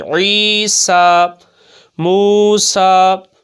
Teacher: عین کے ساتھ یا مدہ ہو رہا ہے، یا ساکن سے پہلے عین کے نیچے زیر ہے اور سین کے اوپر کھڑا زبر ہے، تو اس کو بھی کھینچ کر پڑھیں گے کہ کھڑی حرکات کس کے قائم مقام ہوتی ہیں؟ ہاں، تو ایک الف کی مقدار کھینچ کر پڑھیں گے